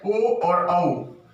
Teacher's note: इसके बाद में है ओ और औ, ये है कंठोष्ठ वर्ण के नाम से इन्हें जाना जाता है, क्योंकि इनका जो उच्चारण स्थान होता है वो कंठ प्लस ओष्ठ, इन दोनों के, इनका जो उच्चारण स्थान है वो कंठ भी है और ओष्ठ भी है